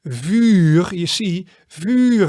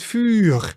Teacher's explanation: many times before an R, the vowel sounds becomes much longer. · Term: long vowel sounds